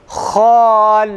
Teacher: Ha kalın, isti'la sıfatından dolayı ses ağzın yukarı kısmından akar. Ha, lamda ise terkik, ince ve istifal sıfatı ağzın aşağı bölgesine aktığı için la değil, ha'nın zıddına la, yalnız imale yapmadan.